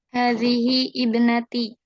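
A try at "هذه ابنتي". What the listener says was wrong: Sahih.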